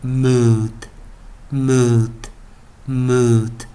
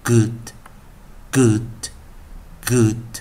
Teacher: 要注意u、哦、拉长一点▁mood▁mood▁mood，▁相对的短元的时候就把刚刚那个▁u▁念短一点